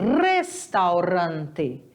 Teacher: o r sempre vai ser vibrante então é restaurante